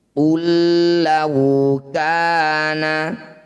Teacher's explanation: Idgham artinya memasukkan bunyi huruf pertama, masukkan pada huruf kedua, tidak usah dengung. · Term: idgham mutamatsilain